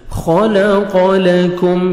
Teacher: یہاں پہ ہم کاف کو میم مشدد کے ساتھ ملائیں گے. میم ساکن کا ادغام اور نوز میں ساؤنڈ لے کے جائیں گے، ناک میں آواز لے کے جائیں گے